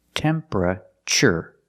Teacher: Not temperature, but temperature. The TU makes a ch sound like chicken.